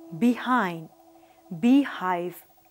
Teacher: H is a voiceless glottal fricative. Here, the vocal cords are kept close together and the air escapes through the narrow glottis with audible friction.